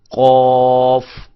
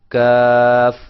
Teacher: یہ ذرا بہت قریب جو ہے لحات ہوتا ہے، کوا جس کو ہم کہتے ہیں، یہ وہاں سے، اور یہ تھوڑا سا کوے سے اس لحات سے ہٹ کر منہ کے قریب تھوڑا سا آگے کی طرف جائیں تو وہاں سے کاف ادا ہوتا ہے. زبان کی جڑ، لحات کے متصل اوپر کا تالو، اس سے قوف، اور ذرا تھوڑا سا آگے منہ کی طرف ہٹ کے کاف